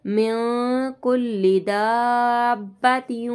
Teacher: मिन कुल्ली दाब्बातिन, ठीक है, यहाँ अलिफ पे 5 अलिफ की मिक़दार खींचते हुए फिर दाल को बा के साथ मिला देंगे। ठीक है, बा में हम जमाव भी करेंगे, तशदीद आ रहा है बा में, तो हम यहाँ पे जमाव करेंगे।